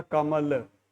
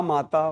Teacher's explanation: अ वाले को बोलने में कम समय और आ को बोलने में ज़्यादा समय लगता है।